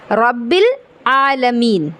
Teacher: आलमीन, आलमीन में आइन है, अलिफ नहीं है, और आइन का मखरज अभी आपने देखा कि हलक के दरमियान वाले हिस्से से अदा होता है